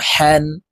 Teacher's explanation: হা হরফ হলকের মধ্যখান থেকে উচ্চারণ হবে, কারণ হার মাখরাজ হলকের মধ্যখান থেকে হবে।